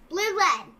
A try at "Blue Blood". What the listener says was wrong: No, not louder. You gotta go Blue Blood, Blue Blood, Blue Blood, Blue Blood, Blue Blood.